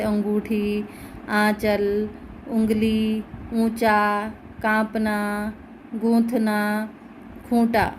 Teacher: आवाज़ निकल रही है वो नाक से भी निकल रही है और मुंह से भी निकल रही है। जो अनुनासिक है यह व्यंजन नहीं है बल्कि स्वरों का ध्वनि गुण है।